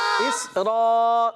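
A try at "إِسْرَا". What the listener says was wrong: سین کو ہلائیں گے نہیں،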